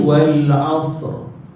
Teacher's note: ro tu bunyi tebal sebab apa Ro mati sebelumnya mati